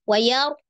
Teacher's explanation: Maka menjadi mad wajib mutasil, panjangnya 4 atau 5, kalau di atas tadi sudah 4, berarti ini 4 ya. Wayar, ada ro sukun sebelumnya fathah, maka dibaca, ro sukunnya dibaca tebal.